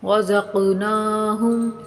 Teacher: قلقلہ کریں گے یعنی قاف کو ہلا کر پڑھیں گے۔